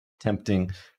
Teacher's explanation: This is our mid front unrounded vowel. This is our epsilon So if you want to give this a name, it's just epsilon.